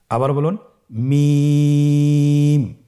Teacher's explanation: মিম হরফটির উচ্চারণ স্থান দুই ঠোটের শুকন স্থান থেকে উচ্চারিত হয় · মিম হরফটি উচ্চারণের ক্ষেত্রে অবশ্যই বারিক হবে, পাতলা হবে এবং 3 আলিফ টেনে উচ্চারণ করতে হবে।